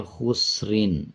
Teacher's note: جب وقف نہیں کریں گے، آیت پہ رکیں گے نہیں، خسرین پڑھا جائے گا اور را کو باریک پڑھا جائے گا۔ جب وقف کریں گے تو را کو پر پڑھیں گے۔